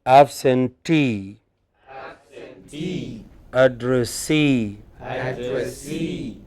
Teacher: Here the suffix itself is stressed.